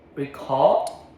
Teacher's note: The stress was on the second syllable.